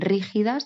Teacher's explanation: Un verso esdrújulo termina con una palabra esdrújula, está acentuada en la antepenúltima sílaba, por ejemplo en rígidas, pues el golpe fuerte va en ri